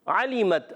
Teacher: علیمت عین کی ادائیگی، عین پر زبر ہے، عین ادا ہوتا ہے حلق کے درمیان والے حصے سے